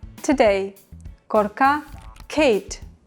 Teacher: we pronounce de as english d in english but without aspiration